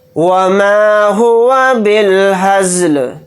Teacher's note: لام کو ساکن بنا کر پڑھیں گے حالت وقف میں